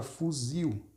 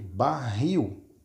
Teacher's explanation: mas porquê que isso acontece porque é uma palavra oxítona fuzil ou seja a última sílaba é mais forte